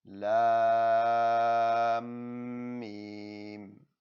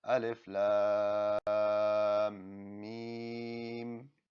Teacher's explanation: we're actually going to put the lam and the meme together, putting a ghunna on the meme. So we would say it as lam meme.